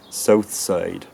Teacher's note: At least in the South, you'd have something more like south side, with vowels starting in a very central position.